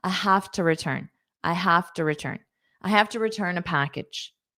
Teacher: So to becomes unstressed because it's a it's the preposition here.